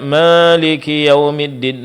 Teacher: mencampur pengucapan huruf alif dengan sedikit bunyi dari huruf ya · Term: imala